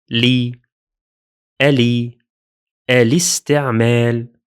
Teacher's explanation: Although the lam has sukun, we pronounced it with a kasra sound.